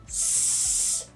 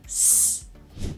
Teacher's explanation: The first way is with the tongue tip up behind the teeth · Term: the S